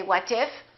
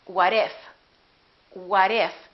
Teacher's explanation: when the t is between two vowels it becomes a fast d